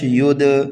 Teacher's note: یہ دال حروف قلقلہ میں سے ہے اس لیے یہاں پر قلقلہ صغیرہ ہوگا